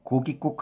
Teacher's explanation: 고깃국 하면서 시옷이 이제 사이소리 현상이 생기면서 첨가가 된 거잖아요